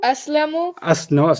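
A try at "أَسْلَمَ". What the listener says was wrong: Not Aslamu. Look at it again. Aslama. It can't be Aslamu. It can't be Aslami. The guy's got to be Aslama.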